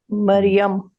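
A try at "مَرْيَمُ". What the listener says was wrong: नहीं, आखिरी हर्फ पे क्या बोलेंगे? मरियमू, यस, इस पे तनवीन नहीं आ रही क्योंकि ये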